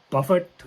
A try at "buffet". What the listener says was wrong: you don't pronounce the tea tea is a silent tea